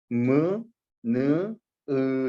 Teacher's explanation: 그 부분을 울려주면서 나는 소리가 무, 느, 으 소리. 코 위에다가 살짝 손가락 대고 무, 느, 으 하면 코에서 진동이 울릴 거예요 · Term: 비음